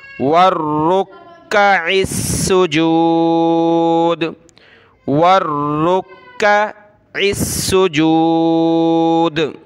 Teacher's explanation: یہ قلقلہ ہو جائے گا د